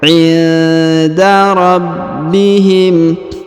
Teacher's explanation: Perhatikan huruf nun sukun bertemu dengan huruf da, maka didengungkan dan disamarkan ya, sebagaimana pelajaran Iqra 6. Pertemuan antara huruf nun sukun dan huruf da, maka didengungkan dan disamarkan.